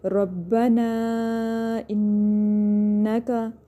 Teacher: اور یہاں پہ مد منفصل ہو رہا ہے کیونکہ الف مدہ کے بعد حمزہ دوسرے کلمے میں آ گیا، تو مد منفصل ہو رہا ہے. مد منفصل جائز، 4 سے 5 حرکات اس کو ہم لمبا کریں گے. ربنا انکا، نون مشدد اور میم مشدد پہ ہم غنہ کرتے ہیں، اچھے سے ناک میں آواز لے کے جاتے ہیں، گنگنی سی آواز آتی ہے.